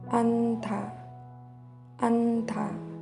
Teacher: only the first consonant is pronounced